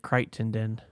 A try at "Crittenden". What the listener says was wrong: Or they say it somehow, but they don't say all the letters like that. They say